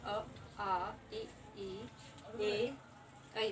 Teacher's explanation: हमारे मुख पूरी तरह से गोल नहीं हो रहे, होंठ गोल नहीं हो रहे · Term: अवृतमुखी